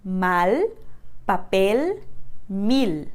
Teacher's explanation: Por exemplo, nas palavras mal, papel, mil. Em espanhol, a gente não vai trocar esse L por U nunca.